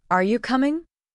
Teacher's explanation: Did you notice how your voice rises a little at the end? That rising tone shows that you are asking something. · When you ask a question, your voice should go up at the end.